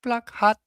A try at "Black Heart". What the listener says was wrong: Oh, sorry, you mispronounced that. It's not Black Hat, it's Black Heart.